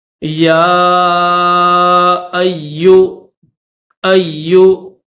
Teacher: یا کے اوپر کھڑا زبر بھی ہے اور چھوٹی مد بھی ہے، تو اس کو تھوڑا کھینچیں گے